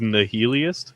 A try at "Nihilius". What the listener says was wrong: Nihilius. no T. Nihilius. I-U-S, sorry.